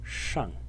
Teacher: If you look at the simplified character, this element over here, this whole thing, is also the phonetic element of the simplified character and is pronounced shang in the fourth tone